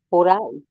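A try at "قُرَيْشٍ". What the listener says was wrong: Haya, sasa hivi umesema Quraishin. Mwanzo ulisema Quraishan.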